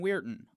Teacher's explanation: Although the town has a fairly uninteresting phonemic transcription, the phonetics shows us a glottal stop followed by a syllabic nasal